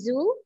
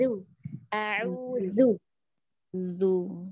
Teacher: huruf zalnya a'udzu, mau lidahnya sedikit keluar